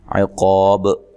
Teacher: عقاب قاف کو موٹا ادا کرنا ہے, الف مدہ ہے, وقف کی صورت میں مد کر سکتے ہیں اور با پہ قلقلہ کرنا ہے